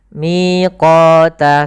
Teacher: Miqata kita tahan. Miqata sama panjangnya 2 harakat. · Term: mad tabi'i